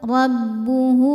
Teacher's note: Maka hak dhamirnya kita panjangkan seperti mad jaiz, boleh 4 boleh 5 harokat. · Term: mad silah tawilah